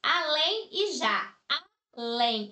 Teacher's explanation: além eu tenho aqui uma palavra que é de sílaba e a sílaba mais forte é a última portanto é uma palavra oxítona